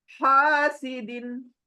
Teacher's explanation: گلے میں، ایک اوپر کا گلا ایک سینے کی طرف گلا، بیچ کے گلے سے یہ ہا نکلنا ہے